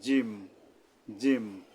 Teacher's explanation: জিহ্বার মাঝখানটা উপরের তালুর সাথে মিলিয়ে শক্তভাবে জিম উচ্চারণ করতে হবে